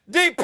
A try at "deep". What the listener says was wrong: It's not DP, it's deep. Deep.